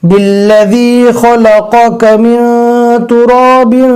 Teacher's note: دھیان سے پڑھنا ہے، پہلے قوف ہے پھر کاف ہے، قوف کو برابر حلق سے ادا کرنا ہے اور کاف کو نارمل پڑھنا ہے